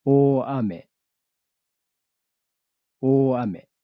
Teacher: after the letter A, the pitch drops. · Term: type 3